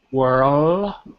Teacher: as soon as you finish saying were, you have to put your tongue to your roof of your mouth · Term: the L sound